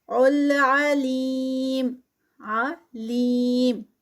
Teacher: لیم پہ 4 کاؤنٹس کا یا مدہ ہے تو سٹاپ پہ ہے تو اس کو 4 کاؤنٹس کا اسٹریچ کریں گے